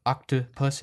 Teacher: that middle vowel the middle O is just uh octopus it's really short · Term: special vowel